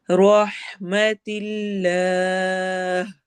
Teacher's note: और फिर हा की आवाज क्लियर हलक के दरमियान से अदा होगी